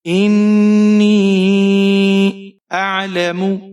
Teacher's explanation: حمزہ کے نیچے زیر ہے, نون مشدد ہے, یہاں پر آپ غنہ کریں گے. یا کے نیچے زیر ہے اور اسے آپ 4-5 حرکات تک کھینچ کر پڑھیں گے.